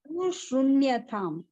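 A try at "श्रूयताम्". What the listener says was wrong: Shruyatam. Because with so many places we heard Shruyatam, Mama Vacha Shruyatam, like that. Shruyatam, not Shrunyatam, Shruyatam.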